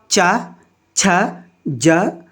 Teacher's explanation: चा वर्ग हमारा किस में आता है, तालव्य में आता है